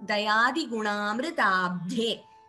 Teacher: Please note that Amritam, that word has to be pronounced just as a, that Mr has to be pronounced as a Gunitaksharam, not with an extra M behind it